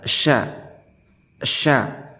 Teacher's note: Adapun makharijul huruf daripada sya ini yaitu berada di bagian tengah lidah dan bagian tengah langit-langit mulut paling atas